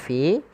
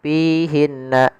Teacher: alirkan nafas ketika melafalkan huruf Fa karena salah satu sifatnya adalah sifat hams mengalirnya nafas